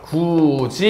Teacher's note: 디귿과 이가 만났고 이의 영향을 받아서 디귿이 지읒으로 바뀌었다 · 누구의 영향을 받게 되냐면 이 혹은 반모음 이인데요. 자, 그래서 이 혹은 반모음 이의 영향을 받아서 드트가 즈츠로 바뀌는 현상